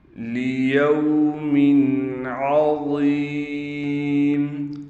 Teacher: وا کو موٹا بھی کرنا ہے، وا کے بعد یا ہونے کی وجہ سے وا کو ایک الف کی مقدار کھینچیں گے